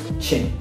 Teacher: quiere explotar pero no explota, quiere rozar pero no, porque es africada, es decir, ya no es fricativa, es africada, y el prefijo a significa no, es decir, que no va a explotar, que no va a rozar. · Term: consonantes africadas